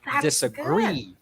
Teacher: disa is unstressed and gree is stressed